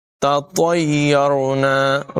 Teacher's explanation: پہلی تا باریک ہوگی اور دوسری تو پر ادا کریں گے۔ تطیرنا، را بھی پر ہوگا۔